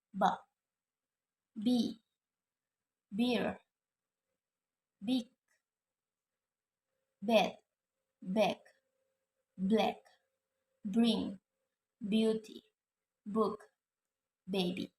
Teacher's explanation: Voiced bilabial stop sound